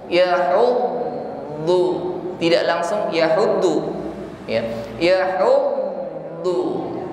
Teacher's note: Dan ketika bertasydid di sini huruf wad lebih tampak sifatnya, yaitu istiqalah, imtidad saut, ya, memanjangnya suara huruf